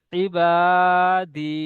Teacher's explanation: আলিফ মাদ্দাকে এক আলিফ পরিমাণ টান দিয়ে পড়তে হয়